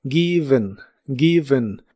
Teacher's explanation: La E de esta palabra es un sonido vocal suave de relleno llamado schwa en inglés. Es como una E suave.